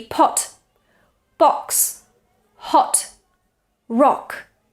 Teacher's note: use their or because oh it's too high this is oh it's low it's open · The first vowel is O. Notice it's rounded, O, and it's quite open, O.